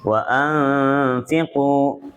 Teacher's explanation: Ku-nya panjang, Ibu. Wa'anfiqu. Fi-nya tidak panjang. Yang panjang di ku.